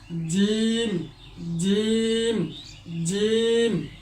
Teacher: জিহ্বার মধ্যখান তার বরাবর উপরের তালুর সঙ্গে লাগিয়ে জিম